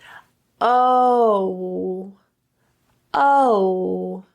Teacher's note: The vowel starts off with a bit more of a neutral o sound and then transitions to a rounding lip position